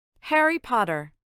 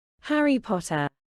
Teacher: el sonido de la r final desaparece Ya que en el inglés británico se suele anular el sonido de la r cuando se encuentra al final de una palabra